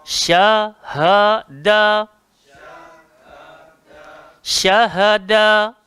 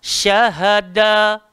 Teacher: Ingat shin dia tak berhajat pada muncung. Ha keluar dekat bawah, tekak paling bawah sekali. Da hujung lidah langgar belakang gigi atas.